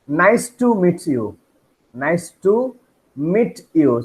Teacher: Ta and y together makes cha.